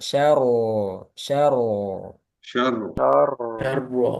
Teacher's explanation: sya tipis ro tebal